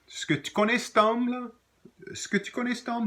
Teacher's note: You can add the word esque, and it's found at times, esque. Many times the esque just becomes ske.